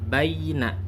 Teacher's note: Kalau harakatnya fathah, maka tidak lagi menjadi mat tabi'i, maka bacaannya seperti baina, ya-nya jelas berbunyi.